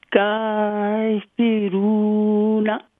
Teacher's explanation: کاف پہ اسٹینڈنگ فتح فتح قدرہ اور را پہ دمہ اور را کو لمبا کرنا ہے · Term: واو مدہ